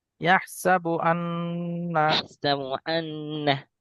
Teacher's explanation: এখানে আমরা ইহসাবু আন, নুনের ওপর তাসদিদ এসছে, ওয়াজিব গুন্না, একালি পরিমাণ গুন্না করে পড়বো।